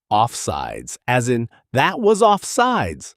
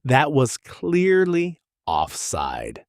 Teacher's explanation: American English adds a plural sound even though grammatically it doesn't need to be there